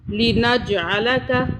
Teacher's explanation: یہ جیم کو طاقت سے پڑھنا ہے کیونکہ یہ قلقلہ کے حرف میں سے ہے